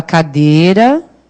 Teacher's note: Isso significa que o I da cadeira, nesta palavra, não é uma vogal. Ele é uma semivogal.